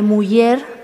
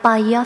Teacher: tenemos una palatal central